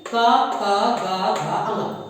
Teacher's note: कंठ में, यहाँ गले में आपकी रुकावट आएगी